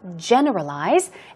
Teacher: stress goes on the first syllable